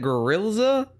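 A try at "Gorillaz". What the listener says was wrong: Gorillas with a Z.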